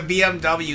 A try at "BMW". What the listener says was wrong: And BMV. Not BMW, BMV. Yeah. German, BMV.